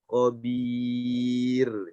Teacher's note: Sama juga khabir, ini karena ada ya mati, maka ro-nya jadi tipis.